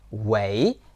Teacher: it is the second tone, the rising tone. Don't use the fourth tone, the falling tone. It will become 喂 That's very rude.